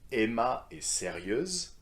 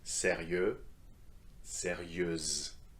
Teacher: So simply add the z sound to make it feminine.